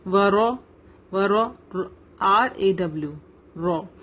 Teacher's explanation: زبر ہے تو رو ہیوی ہوگا